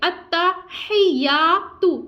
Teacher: تا کے اوپر حرکت ہے ہم اس کو نہیں کھینچیں گے